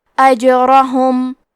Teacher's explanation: کلمت اجرہم میں حرف الجیم پہ جزم ہے کیونکہ جیم بھی حروف القلقلہ میں سے ہے، تو ہم یہ حرف کو ہلاتے ہوئے یہ کلمہ کو پڑھیں گے